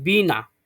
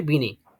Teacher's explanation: শেষে এ স্বরধ্বনিতে পরিণত হলো